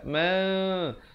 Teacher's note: Di sini hukum iqlab, tanwin bertemu ba. Mula-mula wajibul gunnah, gham dengung betul-betul 2 harakat, kemudian ma, bibir itu hampir bersentuhan saja 2 harakat.